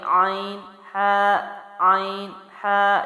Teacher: عین اور ہا کی ادائیگی کیا ہے؟ حلق کے درمیان والے حصے سے ہے